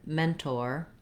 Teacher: We have first syllable stress in mentor. So the men syllable has the clear vowel, it's longer, but we do still say the or in mentor.